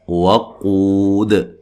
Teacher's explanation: قاف کو موٹا ادا کریں گے، اور یہ و مدہ ہے، ٹھیک ہے۔